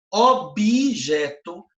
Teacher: parece que tem um i no meio.